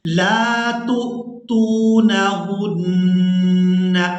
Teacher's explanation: پہلے ہم نے تا کو حمزہ ساکن کے ساتھ ملانا ہے تو جھٹکے کے ساتھ ادا کرنا ہے، دوسری تا کو ہم واو مدہ کے ساتھ ملاتے ہوئے کھینچ کر ادا کریں گے۔